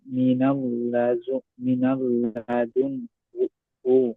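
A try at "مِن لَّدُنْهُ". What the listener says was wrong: না না, মিল লাদুন হো, মিনাল না, মিল লাদুন হো।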